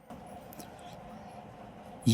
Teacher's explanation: जो हमारी जीवा है वो मुख के किसी भी भाग को पूरी तरह की से स्पर्श नहीं करती। यानी कि वो पूरी तरीके से उस भाग को स्पर्श करके उसकी ध्वनि बाहर नहीं आती। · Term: अंतस्थ व्यंजन